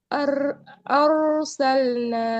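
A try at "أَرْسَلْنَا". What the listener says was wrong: Nah, jangan ar ya. Kalau ar itu tipis. Arsalna.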